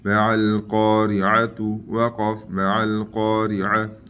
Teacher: گول تا کو وقف کی حالت میں ہا پر بدلے گا، ٹھیک ہے، اس تا کو ہا پر بدلنا ہے، ٹھیک ہے.